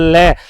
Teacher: लय में जीभ देखना थोड़ी नीचे जाएगी, बीच वाला पार्ट क्या होगा, ऊपर उठेगा, और अगल बगल से जो हवा है वो स्पर्श होकर के क्या होगी, बाहर निकलेगी। उसको अपने क्या कहेंगे, पार्श्विक व्यंजन कहेंगे।